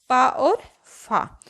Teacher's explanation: पा और फा, तो इनका उच्चारण स्थान होगा ओष्ठ